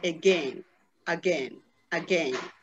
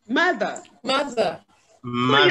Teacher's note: This vowel is what we call the schwa. It is the shortest of all the vowels we have in English.